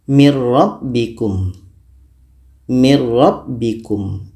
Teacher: Masuknya nun kepada ro itu secara sempurna karena murni kita baca ro saja, tidak terdengar bunyi nun lagi. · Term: idgham bila gunnah